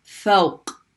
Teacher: so when you end on it you're making that sound where the tongue is hitting the back of the throat and it's blocking off air for a second